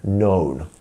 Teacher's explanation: it's almost as if it starts on the N